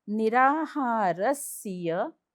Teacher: र वरती आघात कारण पुढे जोडा अक्षर.